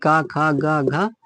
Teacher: कंठ कहाँ होता है, ये होता है कंठ, कंठ कंठ से बोले जाते हैं। ये का खा गा घा या ये बोले जाते हैं कंठ से।